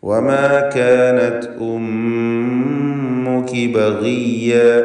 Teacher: വമാ കാനത് ഉമ്മുകി ബഗിയ, ബഗിയ ഇതിൽ ഗൈൻ തഫ്ഖീം ചെയ്യേണ്ട ഇസ്തിഅലാൻ്റെ അക്ഷരമാണെങ്കിലും കുറഞ്ഞ തഫ്ഖീം മാത്രമാണ് നൽകേണ്ടത്. ഗൈനിന് കുറഞ്ഞ തഫ്ഖീമാണ്, ഇത് കസ്റ നൽകപ്പെട്ട അക്ഷരമാണ് എന്നതുകൊണ്ട്.